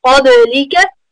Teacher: Make sure that you have it full mouth there. Ba is from huruf qalqala, so you need to make sure you bounce it.